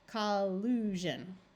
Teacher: words where SI instead of sh says the voice sound of zh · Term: zh sound